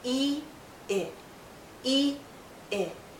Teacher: our lips are more relaxed when we say I. We go from tense to more relaxed.